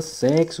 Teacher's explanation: Eu tenho uma única letra, a letra X, representando dois fonemas, o KS. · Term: X com som de KS